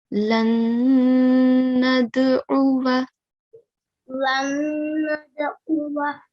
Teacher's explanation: We do a nasal sound for 2 seconds. Okay, so we have to hold it, hold the nasal sound for 2 seconds. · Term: ghunna